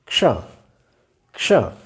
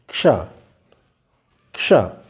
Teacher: हल्की सी क की आवाज़ आनी चाहिए। क, चूंकि हलंत है, आधा है, इसलिए हल्की सी आवाज़ पहले क की आनी चाहिए और इसके बाद मूर्धन्य श आना चाहिए